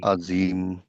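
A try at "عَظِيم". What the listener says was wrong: না জা না, দা দা, আজিম। তোমার জিভটা দাঁতের সামনে লেগে একটু বের হয়ে আসবে। এই তোমার দেখাই, এই যে আমার দাঁত ছিল এটা, হ্যাঁ, আমার জিভটা এরকম বের হয়ে আসবে, এসে তখন এখানে লাগিয়ে আমি বলবো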